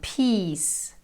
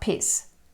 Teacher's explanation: So peace is also a very long sound, peace. It's not piss.